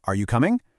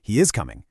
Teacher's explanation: You know how your voice goes up at the end of a question like, Are you coming? and it goes down for a statement like, He is coming. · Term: intonation